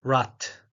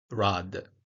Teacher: in German, final obstruents are devoiced. For example, rad, which means wheel in English, is pronounced rat instead of rad.